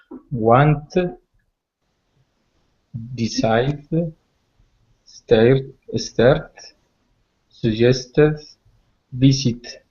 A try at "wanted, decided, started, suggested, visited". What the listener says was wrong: Okay, so each one of these we're going to pronounce the ED ending. Wanted, decided, started, suggested, visited.